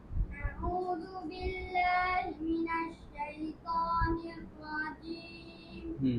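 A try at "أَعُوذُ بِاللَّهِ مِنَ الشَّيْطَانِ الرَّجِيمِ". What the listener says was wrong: নাকের ভিতরে যেন না যায় আবার আবার আউযু নাকে যায় কেন আউযু জোরে প প মোটা করে প মিনাশ শাইতান আবার আউযু নির না নির র মোটা করেন হ্যাঁ নির জিহ্বার আগে উপর উঠাইবেন নির রাজিম আবার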